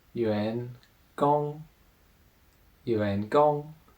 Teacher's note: so that Yu is the second tone the rising tone and gong is the first tone the high tone · And then the next one we have is the subsystem of Yuan Gong, the first one that we are usually introduced to, and that's called Yuan Gong, Yuan Gong. So that Yuan is the second tone, the rising tone, and Gong is the first tone, the high tone.